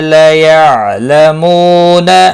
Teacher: مو واو مدہ ہے ایک الف کے برابر کھینچ کر پڑھیں گے